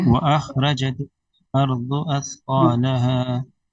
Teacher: اس میں خا بھی موٹا ہے را بھی موٹا ہے